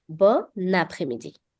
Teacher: So instead of pronouncing these two words separately, bon and après-midi, I'm linking the n sound from bon with après-midi. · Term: une liaison